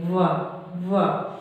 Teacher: और वा, यहाँ पे वा बचता है, वा का उच्चारण स्थान जब हम उच्चारित करते हैं वा को, वा, तो वहाँ पे ओठ भी सक्रिय है, मतलब बिना ओठ आगे किए हम वा का उच्चारण नहीं कर सकते, वा। और यहाँ पर दांत भी सक्रिय है, वा वा, तो इसीलिए इसको क्या कहा जाता है, दंतोष्ठ।